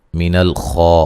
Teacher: من الخا، خا کو موٹا ادا کریں گے اور مد اصلی ہے۔